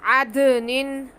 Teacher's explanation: दाल साकिन पे कलकला होगा